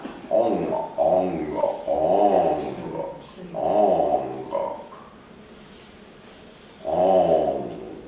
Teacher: you have to elongate the N because if you do the G too fast, then your throat closes